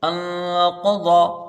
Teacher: نون ساکن ہے، نون ساکن کے بعد حروف اخفا کا قوف ہے تو یہاں 1 الف کی مقدار غنہ کریں گے۔ قاف کو اور ضاد کو، ان دونوں کو جلدی پڑھا جائے گا کیونکہ زبر ہے، دونوں میں زبر ہے، جلدی پڑھا جائے گا۔